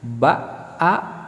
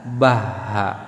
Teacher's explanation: Kalau kita teliti antara hamzah dan huruf ha, itu makhrajnya atau tempat pengeluaran hurufnya itu sama. Dari mana? Dari sini, dari pangkal kerongkongan.